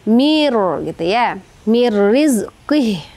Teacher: nun mati bertemu dengan huruf ro itu disebut idigam bila guna. Nah, jadi teman-teman bacanya tidak dengung mir langsung ke huruf rnya.